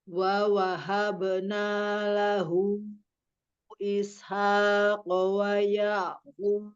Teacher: wa wahabna, wawanya pendek semua.